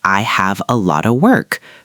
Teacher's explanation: The T changes to a soft D again. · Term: soft D sound